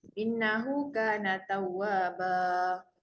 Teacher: Ba tu dibaca dengan kadar 2 harakat.